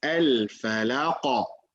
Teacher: the rule is going to be applied in here, the qalqala, because qaf is from the letter of qalqala